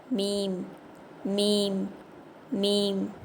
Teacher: மீம் இந்த எழுத்து உதடுகளின் வெளிப்புற பகுதியை சேர்த்து ஓதணும்